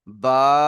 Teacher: আলিফ মাদ্দাকে এক আলিফ পরিমাণ টান দিয়ে পড়তে হবে